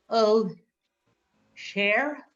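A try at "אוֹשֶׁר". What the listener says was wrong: Yes. Mm-hmm.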